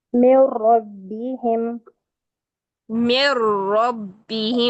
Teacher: एक र की तकरार लेकिन अदायगी दो रों की कैसे दबाव देकर तशदीद का